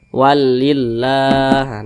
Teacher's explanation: Namanya mad tabi'i, panjangnya 2 harakat atau kira-kira 2 ketukan.